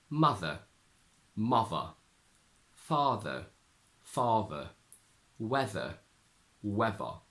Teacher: the voice sound turns into V